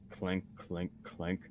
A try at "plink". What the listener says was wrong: Not so clinky. More like plink, plink, plink. Not clank, but plink.